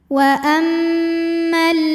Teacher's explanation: alif lam menghadapi huruf Syamsiyah yaitu l maka alif lam tidak kita baca · Wa ammal ladzi, dzi matobi'i dhahiri karena ada ya sukun didahului baris kasrah, maka huruf dzal panjang 2 harokat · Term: alif lam syamsiah